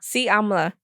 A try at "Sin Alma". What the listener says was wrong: Where's the N? Si Amla. Si Amla. Okay, say sin. Sin.